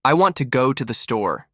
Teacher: The stress falls on go and store. The small words I, to, the, shrink. They almost disappear.